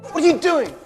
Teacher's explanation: When the T sound stands between vowels, it turns into a flap T or a soft D sound. So instead of what R, we hear what.